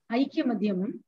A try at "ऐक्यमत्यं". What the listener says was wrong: It is not, again, it's the same mistake again. It is not Madhyam. It is Matyam.